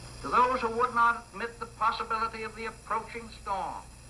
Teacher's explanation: He was a New Yorker who had the prestige pattern of the upper class in New York, and it was really R-less. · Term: R-less pronunciation